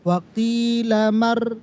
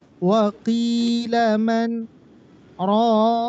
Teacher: jangan dimasukkan ke ro. Di nunnya berhenti.